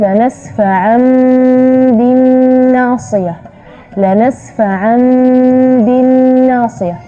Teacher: Jadi tidak jelas huruf nunnya karena di situ ada gunnah, ya, dan juga kadar gunnahnya kadar yangnya.